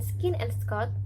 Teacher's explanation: The second sounds in skin and Scott are the k sound, and there is no aspiration when we pronounce this sound.